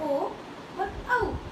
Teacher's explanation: ओ और औ, इसका उच्चारण स्थान क्या है, तो कंठ और ओष्ठ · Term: कंठ ओष्ठ